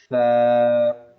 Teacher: اب ثا کی جو ادائیگی ہے وہ اس طریقے سے ہوگی کہ زبان کے نوک کو اوپر کے دانتوں کے بیچ میں لا کر پھر سا کی ادائیگی ہوگی